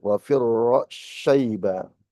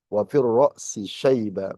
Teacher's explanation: Bisa dengan cara idgham tadi, wa firra syaiba, bisa dengan cara izhar wa firra si syaiba.